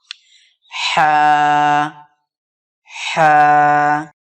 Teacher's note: হালাকের বা কণ্ঠনালীর মাঝখান হইতে উচ্চারিত হয় হা